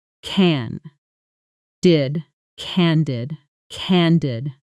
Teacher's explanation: Listen to the stress, candid, strong on the first syllable.